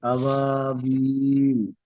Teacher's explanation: বিল। তিন আলিফ পরিমাণ টানা হবে